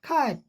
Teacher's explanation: कैट को जब बोलेंगे फास्ट कैट तो ट सुनाई नहीं पड़ता है, नॉट ऑडिबल रिलीज, सुनाई नहीं पड़ता है, बिना सुनाई हल्का सा पड़े ही रिलीज हो जाता है, आगे बढ़ जाता है।